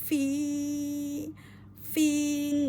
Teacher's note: bibir bawah dengan ujung gigi atas